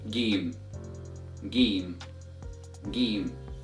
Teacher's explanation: comes from the middle of the tongue and is equivalent to the letter g in English as in the word gold